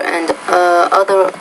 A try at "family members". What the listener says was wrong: Don't forget the S there, is family members and other loved ones.